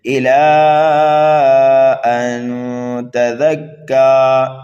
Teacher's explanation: نون ساکن کے بعد تا حروف اقفا میں سے آنے کی وجہ سے یہاں پر اقفا ہوگا